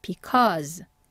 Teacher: because 아니고 커 하고 입을 크게 벌리는 어로 발음해 주셔야 돼요